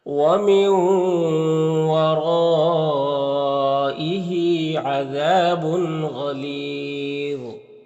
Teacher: یہاں پر تنوین کے بعد غین حروف حلقی میں سے تو تنوین میں اظہار حقیقی ہوگا، غین اور ظا دونوں کو پر پڑھیں گے